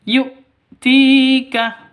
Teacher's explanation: Ti panjang 2 ketukan karena ada ya mati diawali dengan kasroh. Ya mati sebelumnya berharokat kasroh. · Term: mad asli